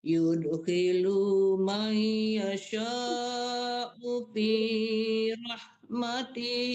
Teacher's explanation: Hinya dipanjangkan, lunya dipanjangkan. Lya tidak panjang, tinya tidak panjang.